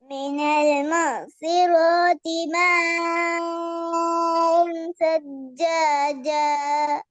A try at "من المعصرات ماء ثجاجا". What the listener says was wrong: அதான் இது 3 செகண்ட் நீட்டத்தோட அலிஃப மறந்தாச்சு. சேர்க்கறது கலந்து பிணைஞ்சி புளிஞ்சு எடுக்கிறதால ஏட உச்சரிப்பு கேட்குது இல்ல, அதனால பிழையாகுது. ஹம்சாவோ அலிஃபோ ஏட சவுண்ட்ல உச்சரிக்கிறதோட அதுக்கு முன்னாடி வார எழுத்தை கொண்டு போயிட்டு சேர்க்கப்படாது. சேர்த்தா பிரச்சனை தான்.